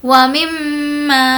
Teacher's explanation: میم پر تشدید ہے، غنہ کریں گے